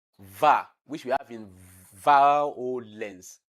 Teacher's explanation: Now we also have labiodental sound, which means the lower lip is touching the upper teeth.